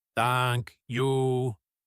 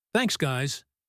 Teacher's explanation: The emotion is carried by the length of the words.